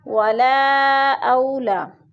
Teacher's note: 4 حرکات کے برابر ہم نے اس کو لمبا کر کے پڑھنا ہے۔ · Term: مد منفصل